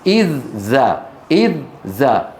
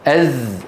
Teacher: الذال من أطراف الثنايا العليا مع طرف اللسان، الزاي من تحت